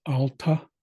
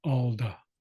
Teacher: Next is alta or alda. So sometimes you can say it with the letter T, alta, or you can soften that T into a D sound, alda. Either way you want to pronounce it, that's fine.